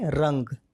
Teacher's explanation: तो यहाँ ग का जो पंचम वर्ण है अंगा, तो अनुस्वर का उच्चारण हलंत वाले अंगा के रूप में होगा